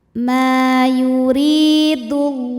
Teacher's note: Karena alif lam menghadapi huruf syamsiyah yaitu lam. Maka alif lam tidak kita baca · Lam jalalah dibunyikan secara tafkhim sebab huruf sebelumnya berbaris dhammah, maka dibaca tebal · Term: idgham syamsi